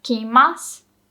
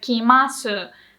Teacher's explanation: like that u is not pronounced much